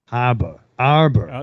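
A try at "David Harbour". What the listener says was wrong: You still said Abba. It's not Abba. David Abba.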